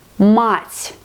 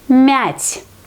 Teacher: If you don't understand that here we have to pronounce it like hard consonant, мать. Here we have to pronounce it like soft consonant, мять.